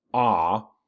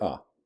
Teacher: a long ah which is by the way more energetic has more weight than a short uh